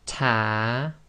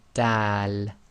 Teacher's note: the front of the tongue meets the gum and it's slightly on the front upper teeth as well